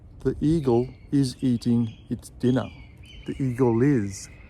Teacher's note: So words that finish with a consonant sound, like eagle, and if the next word starts with a vowel sound, like is, then we're going to join the L sound of eagle with the I sound of is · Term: link the words